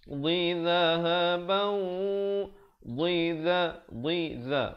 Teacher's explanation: Pertamanya dad baris bawah bunyi dhi, kemudian zal baris bawah ujung lidah za.